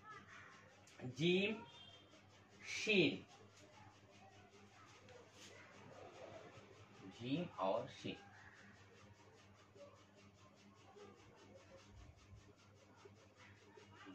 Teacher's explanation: जीम बीच जबान और बीच तालू से निकलती। बीच जबान, जीम जबान के बीच का हिस्सा।